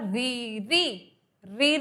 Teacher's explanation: रीरी बोलते में रा में थोड़ा सा वाइब्रेशन होता है जो हमारी जीभ है दांतों के पीछे ऊपर की तरफ आगे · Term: मूर्धा